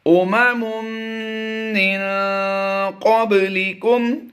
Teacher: من قبل با پر ہم نے قلقلہ کرنا ہے